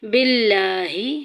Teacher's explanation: لفظ اللہ کا لام باریک پڑا جائے گا